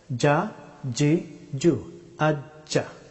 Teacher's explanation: জিম হরফটি উচ্চারিত হয় জিহ্বার মধ্যস্থল সোজা উপরের তালু